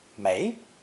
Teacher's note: more common is the second tone pronunciation may because it's an extremely useful negative translated as no none